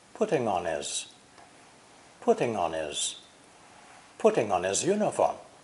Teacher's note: the adjective his is usually unstressed and pronounced without the H sound so we have this linking putting on is putting on is